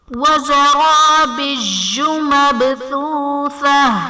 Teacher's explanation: مبثوثہ میں با حرف قلقلہ ساکن ہے، تو یہاں پر قلقلہ کو ظاہر کریں گے